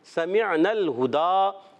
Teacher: سمعنا الہدا، سین سیٹی کے ساتھ ادا ہوگا، میم کو عین سے ملانا ہے، عین کو ہم نے حلق کے درمیان والے حصے سے کلیئر ادا کرنا ہے. اور سمعنا، نون کو لام سے ملائیں گے، لام کو ہلائیں گے نہیں.